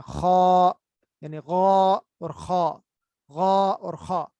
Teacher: تو یہ چھٹا مخرج ہم دیکھ رہے تھے کہ اس میں کیا ہوتا ہے کہ زبان کا آخری حصہ جو حلق کا اوپر والا حصہ ہے اس کے ساتھ جب ملتی ہے تو یہ دونوں آوازیں ادا ہوتی ہیں. لیکن چونکہ یہ دونوں آوازیں بھاری ہیں تو اس لیے کیا ہوتا ہے زبان کا جو اگلا حصہ ہے اس کو ہم نیچے کر لیتے ہیں تاکہ منہ کے اندر خلا پیدا ہو جائے. تو اس طرح یہ ادا ہوتے ہیں.